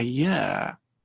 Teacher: So year starts with a very, very little e, very short e.